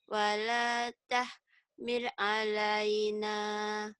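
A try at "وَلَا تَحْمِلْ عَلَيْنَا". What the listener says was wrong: Jangan buru-buru, ya jangan. Wala tahmil alaina, jangan. L-nya itu sempurnakan pengucapan. Wala tahmil maksudnya gitu.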